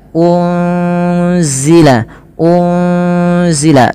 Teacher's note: nunnya disamarkan kepada huruf zai. Ya, unzila, unzila, sembari ditahan dengan 2 harakat bunyinya. Dan ini kita kenal dengan bacaan ikhfa hakiki.